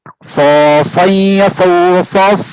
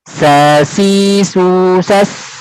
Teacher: Sama-sama sofir, sama-sama infitah, sama-sama hamas dan rohwah, tapi sifatnya ada berbeda, yaitu kalau sod punya sifat isti'la dan juga itbaq, sin dia hanya cuma sifat hamas, rohwah, istifal, infitah yang berbeda. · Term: huruf sod